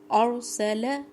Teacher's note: سین سیٹی کی آواز واضح ہونی چاہیے